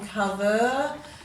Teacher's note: the er on cover you may give it a schwa sound